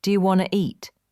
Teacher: Sometimes letters are dropped, like the T in want to. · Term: connected speech